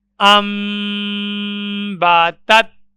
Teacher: نون ساکن کے بعد حرف با موجود ہے، نون کی جگہ میم کو پڑھا جائے گا۔ حمزہ زبر میم، ام، با زبر با، ام با، تا زبر تا، تت، ام با تت۔ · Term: اقلاب